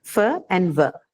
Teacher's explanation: Now, teeth and lips can have sounds like the one which we just discussed, the fur sound, right? The fur and ver, both are labiodental sounds.